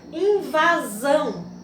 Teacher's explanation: A palavra invasão. Tivemos aqui, última sílaba, zão, forte, né? Sílaba tônica.